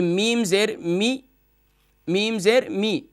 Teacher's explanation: میم زیر می نہیں کرنا، اس کو کھینچنا نہیں ہے